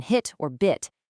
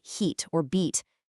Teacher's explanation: The IT vowel scoring of 45 is being improperly tensed. Instead of that short relaxed sound you hear in hit or bit, it's unnecessarily stretched into a long e sound like heat or beat